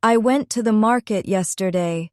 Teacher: the stressed words are went, market, and yesterday. The other words I, to, and the are softer and faster.